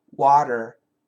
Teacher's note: So basically, W-A-T-E-R is similar to W-A-H, wah, and then D-E-R, der, water. Of course, it's not a D. It's a flat T, but it's very similar to a D. So if we go perfect pronunciation, water.